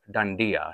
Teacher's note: and then these are the tongue up so it's danda so the tongue goes up instead of out when you're saying the duh